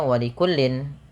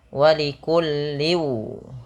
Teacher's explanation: ketika tanwin bertemu waw, ini usahakan dimasukkan kepada huruf waw, ya, karena bacanya dimasukkan, dan ini kita kenal dengan istilah namanya idgham.